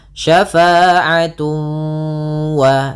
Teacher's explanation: Kemudian pada lafal tun ketemu waw lagi sama sebagaimana syai'an, yaitu ada idgham bi gunnah. Cara membacanya ditahan suara wawnya. Syafa'atun wa sambil dimasukkan ke rongga hidung.